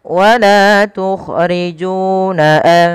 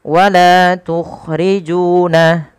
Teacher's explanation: Panjangkan huruf la, ju sepanjang 2 harakat karena keduanya ada bacaan mad tabi'i dan harus sama